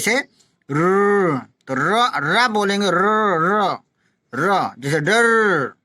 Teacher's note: इसमें मुख द्वार जीभ की नोक से शीघ्र बंद हो जाता है और 3 बार खुलता है, 3 बार खुलता है। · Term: लुंठित